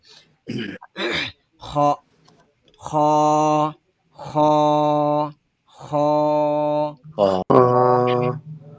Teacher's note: এখানে আমাদের জিহ্বার গোড়া যেখানে শেষ সেখান থেকে নরমালি কণ্ঠনালী শুরু হয়। তো জিহ্বার গোড়ার পর থেকে আরকি কণ্ঠনালীর শুরু থেকে খটা উচ্চারণ হবে।